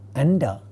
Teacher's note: the second member of this cluster is the sound da. It is a retroflex sound. Therefore, the nasal member of this cluster is going to be a retroflex nasal